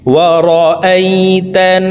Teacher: তো এখানে দেখুন, হরকতের বামে নুনের উপরে তাসদীদ আছে, এই কারণে এই তা তাসদীদওয়ালা নুনের সাথে 3 সেকেন্ড পরিমাণ গুন্নাহ করে ধরে রেখে পড়ব